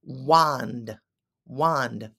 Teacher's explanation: you can't really hear the D at the end it's not a hard D so we say wand wand what's